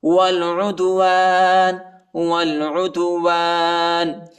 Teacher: حرکت نہیں ہے، اور عین کو دال کے ساتھ ملائیں گے، دال کو جھٹکے کے ساتھ پڑھیں گے، یہ حروف قلقلہ کا حرف ہے